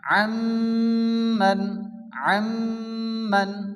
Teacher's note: নুন সাকিনকে মিমের সঙ্গে মিলিয়ে এক আলিফ গুন্না সহ পড়তে হবে। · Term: ইদগামে মিম